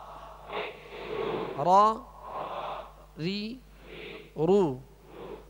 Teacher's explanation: اس میں اس کے ادائیگی میں آواز میں کپ کپاہٹ ہوگی، جسے رعشہ کہتے ہیں، کپ کپاہٹ ہوگی.